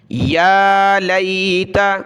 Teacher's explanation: یا کو کھینچا اوپر، ایک الف کی مقدار کھڑا زبر ہے، یا لیت لام یا زبر لی تا زبر تا، یا لیت.